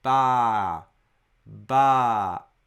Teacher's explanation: you should pronounce it for two moras in length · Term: long vowel